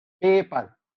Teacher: P sounds in पेपर, the first P is aspirated. पहला जो P है पेपर में एस्पायरेटेड है, और सेकंड P है वो अनएस्पायरेटेड है